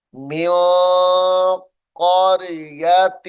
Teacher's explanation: پڑھیں گے۔ وَكَمْ قَصَمْنَا، وَكَمْ قَصَمْنَا مِن قَرْيَةٍ كَانَتْ، یہاں پر غنہ ہے، نون ساکن کے بعد حروف اخفاء میں سے قاف ہے